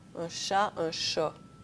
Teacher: la postériorisation du A dans les syllabes ouvertes à la fin d'un mot